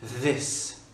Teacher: c'est un peu le son de l'abeille qui vient des cordes vocales avec la langue qui sort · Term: TH qui est vocalique